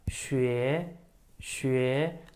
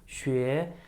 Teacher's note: I say it in the second tone, my voice has to rise all the way up